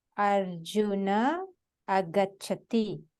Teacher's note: Arjuna ends with an a. There is a Visarga after that. It starts with a. So the visarga will drop.